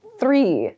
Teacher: I'm not making any sound with my throat when I say the TH in this word. Three.